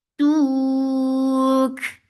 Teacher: you will give hums on kaf because of the waqf